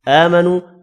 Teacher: آمنو کھڑی زبر اور واو مدہ کو بھی ایک الف کی مقدار میں کھینچ کر پڑھنا ہے